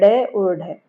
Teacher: जीभ है वो उलटकर मूर्धा को, अर्थात हमने मूर्धा क्या पढ़ा था, मसूड़े का ऊपरी भाग, उसको झटके के साथ छूकर स्पर्श करती है, एकदम से उठ कर जाती है, उछल कर जाती है झटके के साथ, और फिर उठ कर जल्दी से झटके के साथ या उछल कर स्पर्श करती है। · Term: उत्क्षिप्त व्यंजन